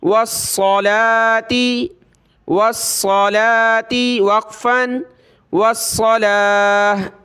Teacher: وقف میں گولتا ہا بن جاتی ہے